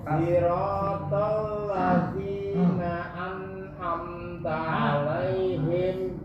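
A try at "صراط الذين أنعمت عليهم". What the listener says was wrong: An'amta. kurang jelas antara huruf A dan A. Seakan-akan yang saya dengar an'am. An'amta. A.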